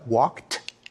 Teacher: actually pronounced in three different ways when we say he walked we pronounce the Ed like a t